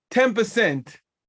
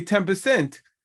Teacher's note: I said 10 percent which is really an M I'm saying an M but we write it as an N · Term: assimilate